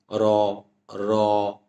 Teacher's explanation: আমি যদি র বলি তাহলে এর সঙ্গে একটা অধ্বনি আসে। আর এই অটা অদৃশ্য ধ্বনি।